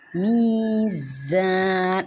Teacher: یہ جو زا ہے اس کو ہم نے سختی سے پڑھنا ہوتا ہے، میزان، اور سیٹی کی آواز آنی چاہیے اس کو پڑھتے ہوئے